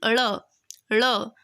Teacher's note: इनका उच्चारण जीभ के ऊपर उठकर के झटके के साथ नीचे आए तो इन्हें उच्छित बोलते हैं